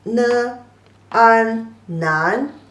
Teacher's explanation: It's pronounced as ne, an, nan, second tone